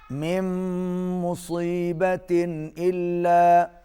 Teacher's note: یہاں پر ادغام الغنہ ہو رہا ہے، آواز ناک میں جائے گی۔